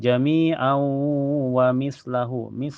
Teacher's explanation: Jami au setelahnya ada hukum idgham bi gunnah karena tanwin fathah ketemu waw. Cara bacanya tanwin fathahnya dimasukkan ke waw dan ditahan sampai terasa ke hidung.